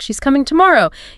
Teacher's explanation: or commands like when you're stating a fact she's coming tomorrow you'd naturally drop your voice at the end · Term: falling intonation